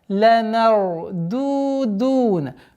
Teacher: Здесь у нас ра, твердое произношение. С мягкого мима уходим на твердый ра.